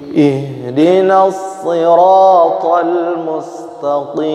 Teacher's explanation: Sa-nya tidak so ya, tidak monyong, so tidak. Jadi harus ditutup.